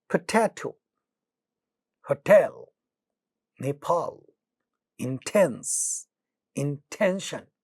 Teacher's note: pa, ta, and ka are getting aspirated not at the initial position of the word, but they are getting aspirated at the initial position of stressed syllable. They get aspirated at the initial position of stressed syllable.